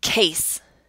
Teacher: do you hear how it sounds like 2 vowel sounds? But it's considered a diphthong. It's 1 vowel sound, and that's a, case.